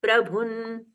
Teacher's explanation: प्रभुन अनुस्वार का न में परिवर्तन।